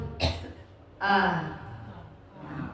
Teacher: Jadi, hamzah ini bagian tenggorokan paling dalam berada pada wilayah pita suara, ya. Jadi, kalau hamzah yang berharakat ketika diucapkan kedua pita suara saling menjauh